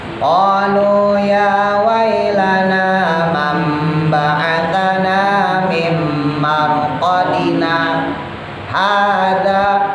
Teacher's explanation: Jadi cara bacanya berhenti tapi kagak boleh napas. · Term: saktah